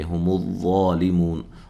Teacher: وا کو اس کے مخرج سے نکالنا ہے، ٹھیک ہے، اور موٹا ادا کرنا ہے اور مد اصلی ہے ، منہ و مدہ ہے، وقف کی صورت میں مد کر